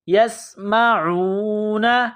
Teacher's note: سین میں سیٹھی کی آواز پیدا کرنی ہے، سین کو باریک کرنا ہے۔